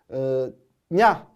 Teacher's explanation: 이냐 발음은 혀와 입천장 이 붙어서 나오게 되는 소리에요